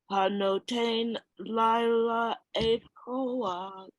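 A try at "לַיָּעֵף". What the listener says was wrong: It's like your tongue doesn't want to believe it's an L sound followed by a Y sound. La ya if koach.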